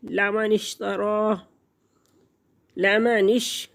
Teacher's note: शिन roof शजरिया, ज़ुबान का वस्त तालू से लगेगा तो ये अदा होगा